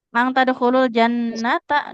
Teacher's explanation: nunnya fathah enggak ada alif enggak boleh panjang